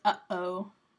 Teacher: that glottal plosive that's right there, the only example that we have of that in English is the sound that happens when we say uh-oh